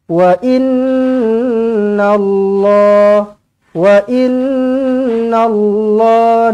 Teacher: nun sabdu wajibul gunnah, dengungkan dua harakat. Wa inna Allah, jangan baca wa inna Allahu, wa inna Allahi, tak nak.